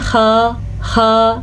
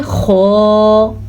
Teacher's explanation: اب آپ کو میں بتاتی ہوں ان کو باریک کیسے پڑھتے ہیں اور ان کو موٹا کیسے پڑھنا چاہیے. اس کو پڑھتے ہیں خا، یہ باریک ہے. ٹھیک پڑھتے ہیں خو، یہ پر ہے